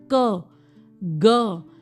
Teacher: जीभ का जो आखिरी हिस्सा है वो आपका सॉफ्ट पैलेट में जा रहा है, जो सॉफ्ट एरिया है माउथ का वहां जाके टच होता है। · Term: वेलर साउंड्स